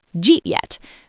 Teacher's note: The D from did and the Y from you smash together to create a j sound. Did you becomes j. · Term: palatalization